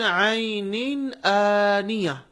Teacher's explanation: عین میں بھی نون پر تنوین ہے، اس کے بعد حمزہ ہے، حمزہ حروف حلقی میں سے ہے، اسی لیے ہم اس تنوین کی آواز کو بھی ظاہر کر کے پڑھ رہے ہیں